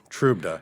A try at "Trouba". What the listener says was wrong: so the d is silent i don't think there's even a d